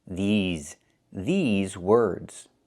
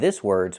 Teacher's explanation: But if you want to remember this words for the long term, we cannot say this words. We have to say these words. We have to use the long e like green beans. I cannot use the short i like this is.